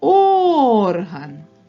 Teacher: наголос падає на звук О він є наголошеним